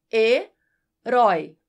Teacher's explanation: acentuada porque o ditongo aberto Oi está em uma palavra oxítona Ou seja a sílaba mais forte é a última